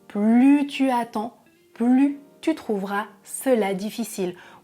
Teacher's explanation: on ne prononce pas non plus le S à la fin du mot plus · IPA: [ply]